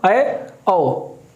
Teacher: अर्धसंवृत यानी कि मुख का आधा बंद होना